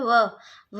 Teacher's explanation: दांत और होठों की सहायता से बोला जाता है, उसे हम दंतोष्ठ कहते हैं